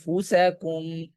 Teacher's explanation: সামনের দুই দাঁতের ধারালো অংশ নিচের ঠোঁটের পেটে লাগবে। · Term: ফায়ের মাখরজ